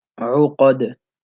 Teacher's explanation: the ayn, it has a dhamma, so you want to circle your lips